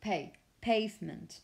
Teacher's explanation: with that but also with stress if you want to use the word pavement the stress on the first syllable so pay pavement not on the last one many times have